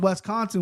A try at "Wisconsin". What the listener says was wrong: Bro, it's it's an I, not an E.